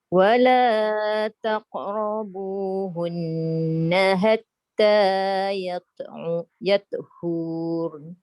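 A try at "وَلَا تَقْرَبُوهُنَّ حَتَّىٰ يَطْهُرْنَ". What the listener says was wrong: Tak panjang kat situ, tak ada waw. Hatta yatuhurun. Tak ada huruf mat. Pendek lah.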